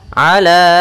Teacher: Maka ketika ada hamzah datang setelah huruf mad, ya di sini ada huruf mad berupa alif, maka kalau hamzahnya berada di lain kata, kita namakan dengan mad jaiz munfasil. Maka ala panjangnya berapa harakat? Panjangnya 4 harakat.